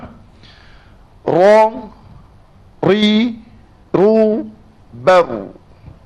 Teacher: Kita latih bunyinya ra yang ada getaran sedikit.